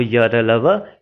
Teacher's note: मतलब जिह्वा मुख के भाग को स्पर्श तो करेगी लेकिन पूरा स्पर्श नहीं करेगी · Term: अंतस्थ व्यंजन